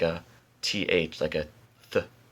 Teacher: And when I do the snare, or when I do the hi-hat sound, my tongue actually moves forward and is on the back of my teeth